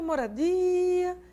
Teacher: Di. Não é o ra que é a tônica, é o di. Foi por esse motivo que as sílabas ficaram, as vogais ficaram em sílabas diferentes.